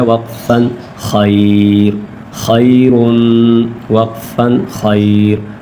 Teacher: دو پیش ہے تو وقف میں جزم پڑا جائے گا